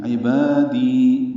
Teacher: با الف مدہ ہے اور دی یا مدہ ہے، 2 حرکات لمبا کریں گے